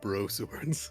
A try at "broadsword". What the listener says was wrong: Broad. It's pronounced broadsword. Broadsword. Broad. You got the D in there. Broadsword. Broadsword.